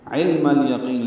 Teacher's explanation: لام ساکن پہ اظہار ہے، یعنی ظاہر کرنا ہے